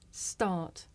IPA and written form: stɑːt (start)